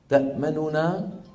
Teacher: أصلها تأمننا وهي فعل مضارع مرفوع استثقل توالي ثلاثة أحرف غنة متحركة، وتخلص من ذلك بإحدى الطريقتين: الأولى الروم تأمننا، وذلك بإبقاء ضمة النون الأولى وخفض صوتها قليلا مع سرعة بالنسبة لما جاورها من الحروف